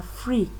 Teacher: there is f and r which are all consonants come together without insertion of any vowel between them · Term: consonant cluster